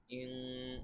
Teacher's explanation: ইন, এখানে আমাদের এভাবে একটু গুণনা করতে হবে, অনুসারের মতো নাকের ভিতরে নিয়ে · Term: ইকফা